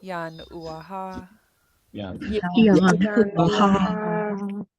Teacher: So just like when you say "uh-oh," you're going to stop the air between yan and uaha.